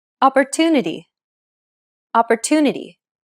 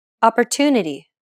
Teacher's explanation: are often shortened while stress syllables are pronounced longer opportunity opportunity the stressed syllable 2 in opportunity is pronounced longer than all the other syllables